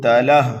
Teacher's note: ہا کے اوپر کھڑا زبر ہے اس لیے ہا کو ہم 1 الف کے برابر کھینچ کر کے پڑھیں گے، یہاں پر بھی وقف بالسکون ہوگا۔